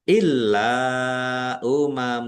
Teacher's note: Lamnya dibaca dobel, ada tasdidnya ditekan dan ditahan biar tampak dobelnya. Lam fathah alif mad thobi'i.